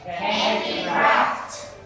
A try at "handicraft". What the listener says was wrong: Craft. Not P. F. Handicraft. Handicraft.